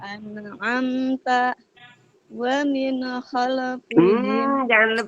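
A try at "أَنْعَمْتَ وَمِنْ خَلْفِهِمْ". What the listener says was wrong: Jangan mantul Bun. Mantul ya Bun. Wa min khalfihim juga mantul. Hati-hati ya Bun, jangan mantul dua-duanya.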